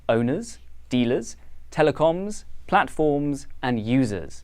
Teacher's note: the voiced z sound marks the plural in the words owners dealers telecoms platforms and users